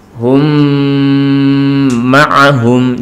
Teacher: Jadi mimnya sukun masuk pada mim berikutnya disertai dengan berdengung. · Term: idgham mutamatsilain